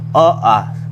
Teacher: स्वर अ आ का उच्चारण स्थान है कंठ